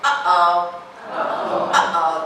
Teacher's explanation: And what it is the vocal folds are closing, the air builds up here, and then it pops · Put your hand here and say, uh-oh, uh-oh. That jump in the glottis is a glottal stop.